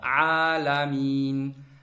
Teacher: Nun burundan çıxır axırda.